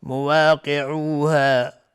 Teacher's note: قاف از حروف استعلا غلیظ تلفظ میشه